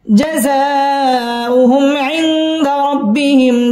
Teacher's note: জাযাউ মধ্যে মুত্তাসিল চার আলিফ টেনে পড়তে হবে।